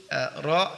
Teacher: Yaitu syiddah tidak, tertahan suara tidak, kemudian rokhawah dialirkan suara juga tidak, pertengahan, jadi dialirkan tapi sedikit. Istifal dan infitah berarti ra adalah huruf tipis, kemudian al-idlaq ringan bagi lidah ya ketika mengucapkannya. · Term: at-tawasut